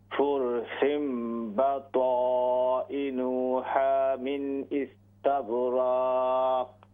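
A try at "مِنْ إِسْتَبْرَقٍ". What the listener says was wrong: من استبرق. रक लंबा नहीं करना उसको.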